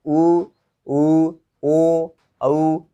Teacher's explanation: इसमें होठों की आकृति है वो गोल होती है। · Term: आवृतमुखी